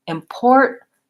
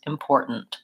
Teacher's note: It goes up to T, import, and then it releases right into the N, important. And so then my N is what's called a syllabic N, and that means that it has its own sound.